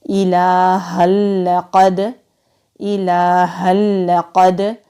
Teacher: تنوین کے بعد لام آ رہا ہے تو ادغام کریں گے لیکن غنہ نہیں کریں گے، یعنی کہ ملا کر پڑھیں گے اور غنہ نہیں ہوگا۔ قاف حلق سے ادا ہوگا، مستعلیہ حروف میں سے ہے، دال ساکن ہے تو کلکلا ہوگا۔